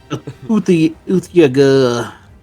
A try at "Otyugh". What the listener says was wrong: Yeah, but you're putting more consonants in there than there is. It's 6 letters.